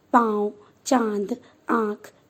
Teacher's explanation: बिंदी के रूप में इसका उच्चारण नाक से होता है, इसे अनुस्वार कहते हैं, जैसे घंटी, गेंद इत्यादि। चंद्र बिंदु इसका उच्चारण नाक और मुंह दोनों से होता है, इसे अनुनासिक कहते हैं